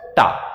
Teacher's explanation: हमारी जीभ जो है वो सीधी रहे और पलट के वापस आ जाए, टा, यानी कि मुड़े उसके बाद नीचे गिर जाए, उसे कहते हैं मूर्धन्य।